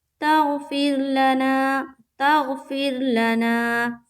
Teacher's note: را ساکینہ سے پہلے کیا ہے؟ زیر ہے، را کو باریک رکھیں گے۔